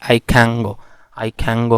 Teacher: न साउंड जो है वो बजाय ये एंगमा साउंड बन जाता है, ये वाला। और आई कैन की बजाय आई कैंगो, आई कैंगो हो जाता है, आई कैंगो।